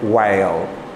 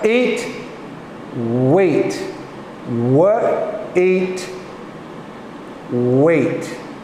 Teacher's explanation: When we put them together, the H becomes silent. There's no sound at all, it's shh, just W. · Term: WH sound